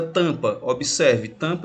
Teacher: No caso eu tenho 4, porque o A com M ele vai ter o som de AN, o A com TIL, ou seja, o M só serve para nasalizar a vogal anterior